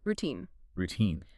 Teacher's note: Make sure that second syllable is long and heavily stressed. Routine, not R-O-tine.